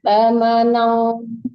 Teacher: Wa aimanihim samanang, disamarkan ke ong jadi bunyinya ya.